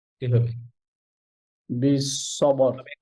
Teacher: সবে, বা পাতলা, সদ মোটা, সবে, সবর, আবার র মোটা